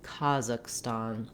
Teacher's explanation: That's because it's going to go by quickly, and we have a little more length and clear vowel at the beginning and the end.